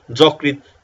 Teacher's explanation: অ ধ্বনির পরে যদি ঋকার হয় তাহলে অধ্বনিটি সংবৃত বা ওর মত উচ্চারণ হবে